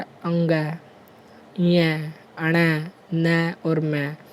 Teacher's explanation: वे व्यंजन जिनके उच्चारण में हवा का प्रमुख वेग नासिका मीन्स नाक से निकलता है, नासिक्य व्यंजन कहलाते हैं।